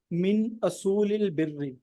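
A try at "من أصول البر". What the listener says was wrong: मिन असूल। हाँ, हमजा के ऊपर पेश होगी।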